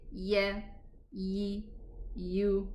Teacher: If we say yeah, ye, you, we do notice some vibration in the vocal cords while pronouncing the yeah.